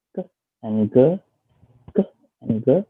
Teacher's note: And k and g, k and g, k and g is one pair, which the place of articulation the place of articulation is at vela, which is tongue at the back and the soft palate.